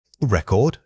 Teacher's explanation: When you say record as a noun, the emphasis starts immediately. When it's a verb, the energy shifts inward.